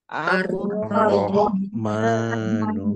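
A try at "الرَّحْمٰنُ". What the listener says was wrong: A-nya kepanjangannya nah, jangan sampai seperti itu. Ar-Rahmanu.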